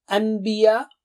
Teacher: as you join your lips for saying ba, an, you see what happened? Meme sound comes automatically. An. So what they did is change it to meme.